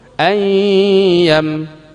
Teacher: ditahan gunnah, kadar gunnah 2 sampai 3 harkat.